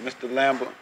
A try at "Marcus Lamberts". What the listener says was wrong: Lamberts with the S.